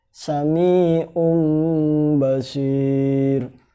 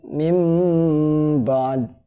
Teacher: Jadi seperti ada mimnya, mengganti huruf nun bunyinya menjadi mim, seperti mim. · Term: iklab